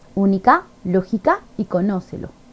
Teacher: ejemplo única lógica y conócelo estas tres palabras son esdrújulas porque tienen la mayor fuerza de voz en la antepenúltima sílaba